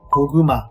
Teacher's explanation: Keep in mind that the second KG sound is a voiced G sound, not a K sound.